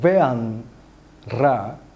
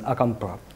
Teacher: The next one is postnatal trilling. Yes, in Rombo, dental and bilabial voiced stops are rather regularly realized as trills